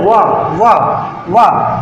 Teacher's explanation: जब वाह बोलते हैं तो नीचे वाले ओठ ऊपर वाले दांतों से क्या होंगे, टच होंगे, वाह वाह। तो दंत और ओष्ठ वाह होता है।